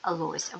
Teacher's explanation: буква м'який знак яка сама по собі звуку не позначає а пом'якшує попередній приголосний